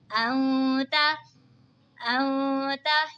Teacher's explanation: नून साकिन के बाद हुरूफ़े इक़फ़ा का ता आ रहा है तो इक़फ़ा होगा यानी गुन्ना करके पढ़ेंगे